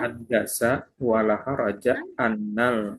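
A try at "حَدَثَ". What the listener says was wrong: hadasa itu bukan haddasa. Hadasa terjadi kalau haddasa menceritakan.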